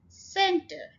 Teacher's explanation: ए की साउंड है, सेंट। सेंटर again 2 syllable word और स्ट्रेस फर्स्ट सिलेबल के ऊपर